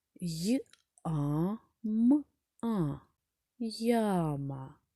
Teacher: Ми чітко чуємо не одну букву я а два звуки й та а